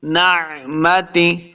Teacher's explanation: اولن اولن نعمتی، عین کو تلفظ کے ساتھ پڑھنا ہے، نعمتی ایسا نہیں کریں گے، حمزہ کا ساؤنڈ نہیں ہے بلکہ عین پڑھنا ہے۔ نعمتی، تا زیر تی ہوتا ہے، تا زیر تے ایسے نہیں پڑھیں گے۔